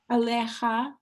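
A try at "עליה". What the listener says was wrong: Not ha. Ha. It's a soft. ha. it's aleha.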